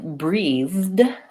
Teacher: I breathed has the voiced th so the past tense verb has this sound the and that's